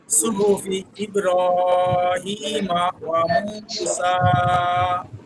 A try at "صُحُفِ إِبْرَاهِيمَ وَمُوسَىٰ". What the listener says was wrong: একটু টান, ইব্রাহিম।